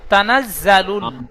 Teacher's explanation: লাম লাম পেশ লুল, একটু টান গুন্না কিছুই হবে না।